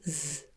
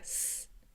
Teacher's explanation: You just put your fingertips against your throat and say Z. And if you can feel a vibration, it's voiced. If you can't feel a vibration, like s, it's unvoiced.